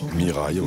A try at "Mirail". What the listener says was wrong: Mirail. On ne prononce pas le S. ça se fait pas.